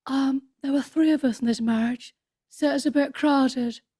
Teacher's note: when she spoke, it was very, very sort of breathy and very sexy, actually.